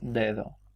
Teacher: esas primeras Ds tienen algo en común, que es que eran todas oclusivas y eran dentales, por supuesto eran sonoras. Mientras que en cada emisión la segunda D era expirante y era interdental. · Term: La D oclusiva dental, D expirante interdental